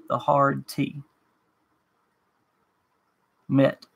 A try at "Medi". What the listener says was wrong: No, don't say the hard T. It's like medicine, MEDI, Medi. Medi. Medi. Meta. Meta, medicine,